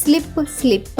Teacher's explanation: ఎస్ఎల్ యొక్క శబ్దం సాలా కాకుండా స్లా అవుతుంది